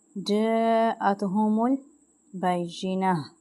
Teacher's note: اب مد ہے اس کو ہم 5 الف کے برابر کھینچیں گے جاءتهم البینہ اور ہا کی آواز آئے گی اینڈ پہ اب